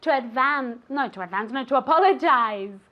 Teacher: you have that Z sound that you have to move your vocal cords like a little B